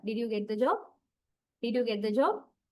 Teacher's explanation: And this is yes, no question. So, I rise my pitch level.